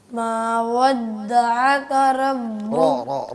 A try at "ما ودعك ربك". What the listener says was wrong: रा मोटा करना है, रा बोल्ड करके पढ़ना। रा पुर नहीं कर रहे आप, रा को पुर करें। रा